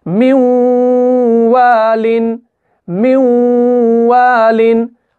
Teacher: हम म्यू पढ़ रहे हैं, मीम को इस वाव के साथ मिलाकर पढ़ रहे हैं, और नून साकिन जो है वो इस वाव के अंदर मुदगम हो जाता है, इस तशदीद के अंदर वो मिल जाता है। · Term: इदगाम गुन्ना के साथ